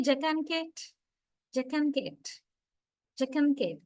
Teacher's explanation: A is not pronounced. Instead, and is prominent, which means and is syllabic there.